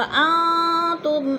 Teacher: نون ساکن کے بعد تا آ گیا ہے حروف اخفا میں سے تو ادھر اخفا ہو رہا ہے، آواز کو ناک میں چھپا کر پڑھیں گے